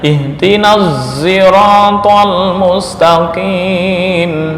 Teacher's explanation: Setiap lafal sirata itu dibaca ismam, mengismamkan huruf shad ke za, sehingga bacaannya ihtinaz siratal mustaqim.